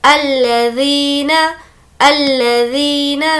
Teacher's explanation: ज़ी को खींचेंगे क्योंकि यहाँ पर या मद्दा है।